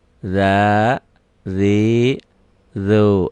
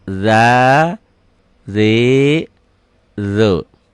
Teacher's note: Ini matobi ya, bacaan panjang. Za, zi, zu. Tapi jangan kepanjangan ya, cuman 2 ketukan. Za, zi, zu.